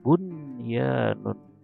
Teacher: nun sukun bertemu dengan ya lagi dalam satu kata, maka bacanya jelas nunnya